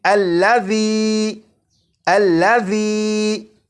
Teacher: اسی طرح اس لفظ میں ذال ہے، اور آپ نے اگر ذال کی بھی بھرپور پریکٹس کر لی تو آپ کو معلوم ہوگا کہ ذال کو سی ٹی کی آواز کے بغیر پڑھنا ہے · जाल को सीटी की आवाज के बगैर पढ़ना है